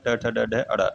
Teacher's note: फिर आपका मूर्धन्य आ गया, मूर्धन से आपका ट वर्ग बोला जाता है, ट वर्ग यानी ट से अड़ा तक